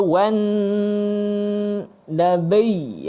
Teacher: Tekanlah sebab dia ada sabdu. Dengung kat situ wan nabi.